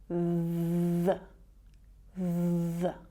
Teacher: It's a voiced sound, so you should get the tickle on your tongue, that vibration, when you make this sound. So the first way to pronounce it is the, with a schwa sound.